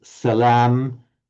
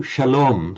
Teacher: A lot of words that have a s in Arabic have the sh in Hebrew.